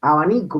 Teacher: expirante bilabial sonoro y se da cuando está entre vocales o con sílaba licuada trabada BL o BR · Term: beta